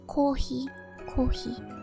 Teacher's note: same they're all considered to have the same initial consonant so the h sound and the f sound are almost synonymous in japanese